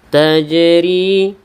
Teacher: ada Jim yang sukun maka ini Qalqalah Sugra ada pantulan yang ringan